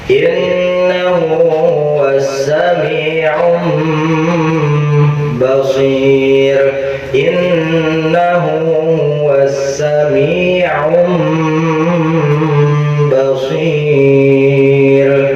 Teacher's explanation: Wajib dibaca gunnah dengung selama 2 harokat, jangan lebih, jangan kurang